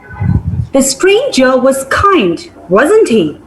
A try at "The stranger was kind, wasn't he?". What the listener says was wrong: You used a falling tone there. Wasn't he is a falling tone. Wasn't he? It should sound like a question. Try again.